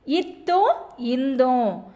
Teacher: மேல்வாய் பல்லின் அடியை நாக்கின் நுனி பொருந்துவதால் பிறக்கும் மெய்யெழுத்துக்கள்